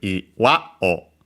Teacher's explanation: iwa accented on the last mora again